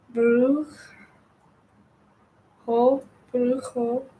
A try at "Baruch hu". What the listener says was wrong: Not ho. Who. Who.